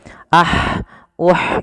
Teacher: kemudian ee Ha ini juga Bagaimana cara melafalkannya sesuaikan dengan makhrajnya makhraj huruf ha kecil adalah dari tengah tenggorokan kita